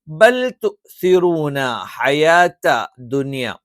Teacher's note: ഈ പറയുന്ന മൂന്ന് അക്ഷരങ്ങളും ഉച്ചരിക്കുന്നത് നാവിൻറെ അറ്റം മേലെ മുൻപല്ലിന്റെ മുരട്ടിൽ വെച്ചുകൊണ്ടാണ് ഇതിൽ ത്വ ഉച്ചരിക്കുന്ന സമയത്ത് മാത്രം നാവിന്റെ മധ്യഭാഗം ഉയർന്നു നിൽക്കണം ദാ ഈ